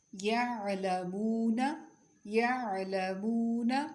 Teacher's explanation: قدرے نرم اور جھٹکا نہیں ہوتا اس میں. عین کی آواز قدرے نرم اور بغیر جھٹکے والی ہوتی ہے